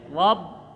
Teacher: Rob ada ba bertasdid rapatkan, tahan satu ketukan. Rob bil ada lam mati, alif lam jangan nyemantul.